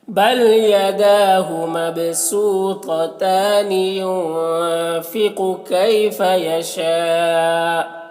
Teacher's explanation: کیفا میں یالین سے نرم آواز کے ساتھ جلد پڑھیں گے. یشا میں مد متصل سے 3-4 الف کے برابر کھینچ کر پڑھیں گے